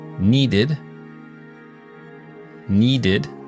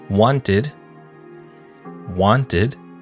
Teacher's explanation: primero suena como Ed después de los sonidos t y d